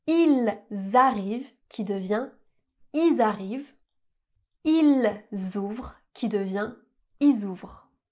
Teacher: on va pas prononcer le L, on va pas prononcer le son le, mais on va garder le s pour faire une liaison.